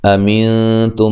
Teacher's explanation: नून साकिन का इख्फा माल गुन्ना है, ता को बारीक पढ़ना है।